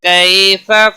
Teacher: یا لین ہے، تھوڑا نرمی کے ساتھ کھینچ کر پڑھیں گے